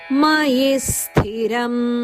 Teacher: ಮಯಿ ಹರಸ್ವ ಈ ಅನಂತ ಮೇಲೆ ಆಘಾತದ ಕೊಟ್ಟಿದ್ದಾರೆ ಆದ್ದರಿಂದ ಮುಂದೆ ಬರುವ ಸ್ಥಿರಂ ಸ ಕೆ ಒತ್ತುಕೊಟ್ಟು ಹೇಳಬೇಕು